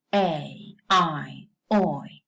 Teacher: mid position alright so we classify two things into closing because the tongue goes from a more open vowel to a closer vowel